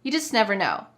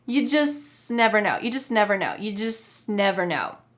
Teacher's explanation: The word just is reduced so much, is said so quickly that it's hardly there.